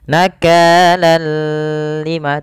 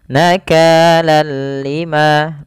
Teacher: Dan gunah Bi dengan la gunah berarti dengan tanpa gunah Artinya kita membacanya hanya idgam saja tanpa disertai dengan gunah idgamnya apa idgamnya adalah kita memasukkan tanwin ke huruf lam Seraya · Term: Idgham bilaaghunnah